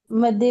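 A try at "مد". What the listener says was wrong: मद, एक तो मद्दे नहीं करना आपने, ठीक है? आपने कहना मद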